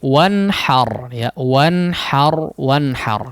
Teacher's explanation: Nun sukun yang diizharkan, sehingga gunnah yang ada di huruf nun di sini jangan terlalu lama ya